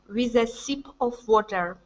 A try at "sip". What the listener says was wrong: instead of seep seep it's sip sip of water